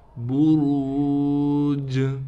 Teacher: جیم پر قلقلہ کیا جائے گا۔ جیم حروف قلقلہ میں سے ہے، یعنی آواز کو ہلائیں گے۔ · یہاں بھی را کو موٹا کر کے پڑھیں گے۔ را کے بعد واو ہونے کی وجہ سے را کو 1 الف کی مقدار کھینچیں گے۔